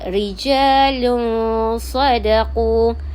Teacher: Dengung 2 harkat serta bunyi antara jelas dan juga gabung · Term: ikhfa hakiki